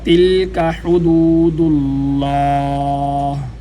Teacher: تلک یہاں پر تا باریک ہے اور لام پر قلقلہ نہیں کیا جائے گا کیونکہ یہ حروف قلقلہ میں سے نہیں ہے، تو لام پر ٹھہراؤ ہونا چاہیے آواز میں۔